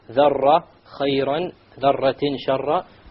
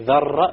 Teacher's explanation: You make sure there is no rolling of the R.